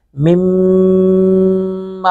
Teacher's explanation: وَعُيُونٍ وَفَوَاكِهَ مِمَّا मिम्मा, मी मुशद्दत पे गुना करेंगे, मिम्मा, दोनों होंठों को मिलाकर नाक में आवाज जाएगी